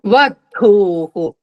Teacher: last కి మహాప్రాణం వచ్చింది ధ గట్టిగా పలకాలి